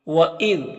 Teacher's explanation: زال کو باریک پڑھیں گے اور زال میں قلقلہ نہیں کرنا ہے